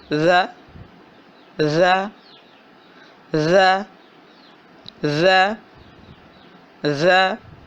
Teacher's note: بالکل زبان کی نوک اوپر والے دو دانتوں کے کنارے سے لگ رہی ہے، ز ز۔ آپ کے سامنے یہ تصویر بنی ہے، بالکل اس طرح اپنے منہ کی پوزیشن بنائیں، ز ز۔ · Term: ذال